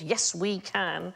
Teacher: Molossus, so that's three stressed syllables